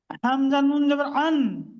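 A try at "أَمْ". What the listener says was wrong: নুন নয়, মিম।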